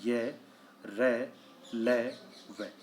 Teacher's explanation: किए जाते हैं दूसरा प्रकार आता है अंतस्थ व्यंजन वे व्यंजन जिनका उच्चारण करते समय जीभ मुख के विभिन्न भागों को पूरी तरह स्पर्श नहीं करती यानी केवल आंशिक स्पर्श करती है उन्हें अंतस्थ व्यंजन कहते हैं और यह होते हैं य र